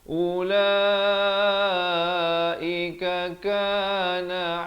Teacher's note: ka yang pertama satu harakat, ka yang kedua dua harakat.